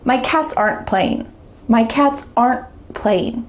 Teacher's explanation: There's a pause because my tongue stopped at the top of my mouth. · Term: stopped T